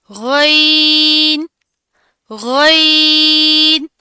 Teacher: गईन और खौ का मखरज सेम है, इसको मोटा पड़ा जाता है, इसकी अदायगी करते वक्त आवाज जारी रहती है।